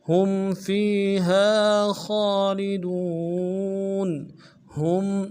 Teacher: ہا کو میم کے ساتھ ملانا ہے، میم ساکنہ غنہ کریں گے